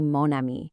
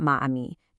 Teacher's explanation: Even though ami is feminine, you say mon ami, not ma ami, just to avoid that vowel clash. It's all about that beautiful flow.